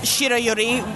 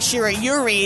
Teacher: you don't stress that last syllable you say it all in one